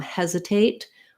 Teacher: it has first syllable stress